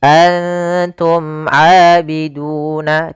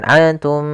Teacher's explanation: Izhar syafawi yaitu terjadi apabila ada huruf mim mati bertemu seluruh huruf ijaiyah kecuali mim dan ba, dan di sini bertemu dengan huruf ain yang mana termasuk huruf izhar syafawi, maka dibaca dengan jelas suara mimnya. Antum abiduna, tidak boleh ditahan antum enggak, karena dia izhar harus jelas.